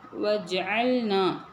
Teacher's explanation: சுகூன் வரும்போது அது கல்கலாவுடைய எழுத்து அசைச்சு ஓதணும்